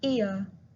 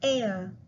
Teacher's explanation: Remember that the first vowel is longer and stronger than the second one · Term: diphthongs